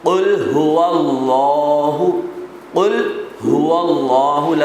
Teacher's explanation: لفظ اللہ سے پہلے زبر، لہٰذا لفظ اللہ کو پر پڑھا